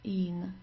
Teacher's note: So just a long I and then an N.